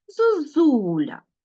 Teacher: звук а чи всі голосні звуки Ми чуємо чітко зозуля ну звук о ми здавалося чуємо якось нечітко Тому що наші губи вже готові на наголосити наступний склад і тому о в нас дещо уподібнюється до у